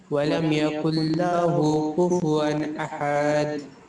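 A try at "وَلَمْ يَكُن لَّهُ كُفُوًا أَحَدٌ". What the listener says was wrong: ওয়ালাম ইয়াকুল লাহু কুফুয়ান আহাদ, এখানেও কিন্তু একটু টান পড়ে গেছে, আহাদ টান হবে না, কুফুয়ান আহাদ, আহাদ। ওয়ালাম ইয়াকুল লাহু কুফুয়ান আহাদ, ওয়ালাম ইয়াকুল লাহু কুফুয়ান আহাদ। আবার ওয়ালাম ইয়াকুল লাহু, মুতে টান আছে, কুফুয়ান আহাদ, কুফুয়ান আহাদ।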